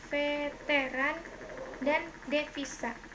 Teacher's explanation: Konsonan V, kriterianya bunyi labiodental geseran bersuara